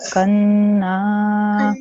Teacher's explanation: the noon also has a vertical fatha. That means I have to prolong the noon sound.